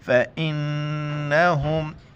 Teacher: नून की जगह पर गुन्ना करना, नाक में आवाज़ छुपानी है।